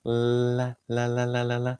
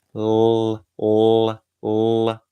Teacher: You can hear it's a different sound, right? So the light L is just the tip, and then the dark L is a little bit more of the tongue touching the top of your mouth